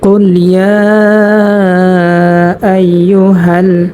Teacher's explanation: তো আমরা এখানে ইয়ার মধ্যে 3 আলিফ টান করব। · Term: মধ্যে মুনফাসিল